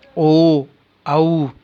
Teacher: ओ और औ इनका उच्चारण स्थान कंठ और ओष्ठ है। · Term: कंठोष्ठम